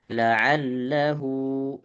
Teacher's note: Hu-nya panjang, hu-nya 2 harokat. La'allahu 2 harokat.